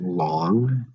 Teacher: in the word long it's a short vowel the O does not sound like oh